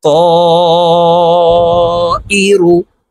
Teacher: মদের হরফের উপরে মোটা চিহ্ন বামে হামজা মধ্যে মুত্তাসিল চার আলিফ টানিয়া পড়িতে হয়